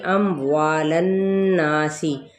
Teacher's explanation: وا پہ الف مدہ ہے، ایک الف کے برابر کھینچیں گے اور نون پہ غنہ کرتا ہوئے الف مدہ اور سین کی زیر پہ واضح کریں گے، سین پہ سیٹی بھی کرنی ہے۔